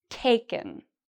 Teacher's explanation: Just like a lot of our verbs, the first part is pronounced louder and longer.